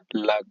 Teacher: प्रयत्न के आधार पर ल किस प्रकार की ध्वनि है? पार्श्विक